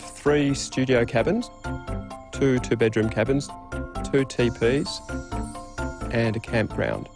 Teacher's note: a level tone or a low Rising tone can also be used for listing